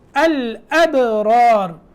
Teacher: یہاں پہلا را موٹا ہے اور دوسرا را باریک ہے اور اس سے پہلے جو با ساکن ہے وہاں قلقلہ ہے.